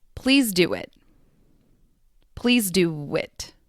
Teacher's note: There is a soft W sound between do and it